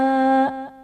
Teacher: खालिदीन में खा हर्फ मुस्तालिया पूर्व पढ़ा जाएगा और खा पर खड़ा ज़बर है जो कि अलिफ मद्दा के कायम मुकाम है, इसलिए हम इसे एक अलिफ यानी दो हरकत के बराबर खींच कर पढ़ेंगे।